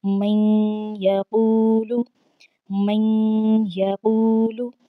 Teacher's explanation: آواز کو ناک میں لے جاتے ہوئے میم کو ہم نے یا کے ساتھ ملا کر پڑھنا ہے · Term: گنہ